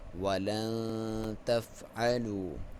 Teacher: یہاں پہ اخفا کریں گے, ایک الف کے برابر لمبائی, ناک میں سے آواز نکالیں گے